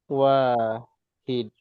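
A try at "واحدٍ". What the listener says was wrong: Pakai tanwin wahidin.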